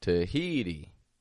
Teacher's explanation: I didn't say Tahiti with 3 strong sounds, but it was rather weak, strong, weak.